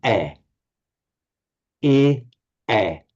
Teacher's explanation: in modern Hindi, they don't pronounce this I as an I sound. It's more like an open eh. Eh. So he and he.